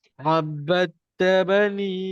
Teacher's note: Da dengan ta makhrajnya sama. Hujung lidah ke antara gusi dan gigi atas.